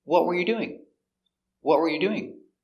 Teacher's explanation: What were you doing is an information question because it starts with a question word, what? So the intonation goes down at the end.